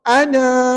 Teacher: ketika wakaf Ana dibaca Dua harakat